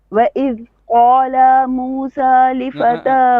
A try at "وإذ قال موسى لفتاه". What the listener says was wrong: stretch the lam وإذ قال موسى